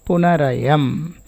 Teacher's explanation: Now the visarga becomes ra, following is a vowel and preceding is also a vowel. Punaha ayam, punarayam.